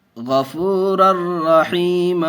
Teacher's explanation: 2 زبر تنوین کے بعد حروف یرملون میں سے را آیا ہوا ہے، اس لیے بغیر گنہ کے پڑھیں گے۔